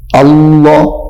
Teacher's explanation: اب اس کو موٹا کر کے پڑھیں گے اللہ اپنے منہ کو پر کر کے